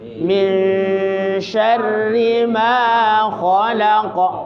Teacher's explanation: Ikhfa itu artinya samar. Suaranya nun dibaca samar. Di mana kadarnya sama antara samar dengan dengung.